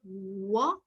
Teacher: when i say wha what is happening both the lips are coming together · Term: bilabials